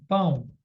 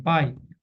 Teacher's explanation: o ditongo ele pode ser nasal, quando sai pelo nariz, ó, né? E ele pode ser oral, quando o som sai pela boca